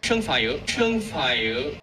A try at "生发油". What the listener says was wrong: 生发油. Pronouncing this word as a third tone, 法 is really rare in mainland China, but really common in Taiwan. I believe in Malaysia and Singapore as well. So it's like he's got mixed accent, probably under the mixed influence in America. So this character actually has two pronunciations.